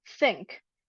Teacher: the non-sibilant th sound in the word think is very light at the upper part indicating very weak turbulence